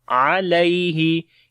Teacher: یا یہاں پر لین ہے، نرم پڑھیں گے